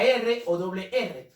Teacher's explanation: los vibrantes se dice que el ápice de la lengua aquí se produce una vibración en la punta aquí en el ápice de la lengua